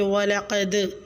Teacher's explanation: اور دال ساکن پہ قلقلہ کریں